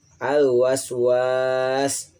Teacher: Al waswasi alif lamnya disebutnya komariah, jelas dibaca alif lamnya.